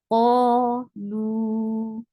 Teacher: Qaf is heavy letter, and here it is on the highest level of heaviness, so make sure you make it nice heavy. Qalu. This and qa is 2 counts long too because alif followed by fatha is a long vowel.